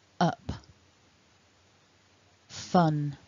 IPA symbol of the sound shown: ʌ